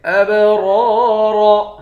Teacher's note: اس را دونوں را کو موٹا پڑھیں گے · حمزے کو با کے ساتھ ملا کر با پہ قلقلہ کریں گے، با حروف قلقلہ میں سے ہے۔